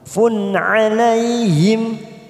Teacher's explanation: fun dumat tanwin bertemu ain kita baca jelas tanpa mendengung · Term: idhar halki